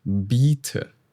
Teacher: the only difference here is that the vowel in biete is long.